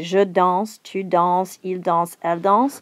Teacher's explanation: all of these endings, although we write them and we spell them a little differently, are all silent